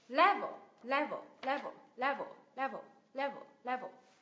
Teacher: Ok, từ level mức độ đúng không? Nhấn vào tiếng thứ nhất thì âm thứ hai là schwa sound này.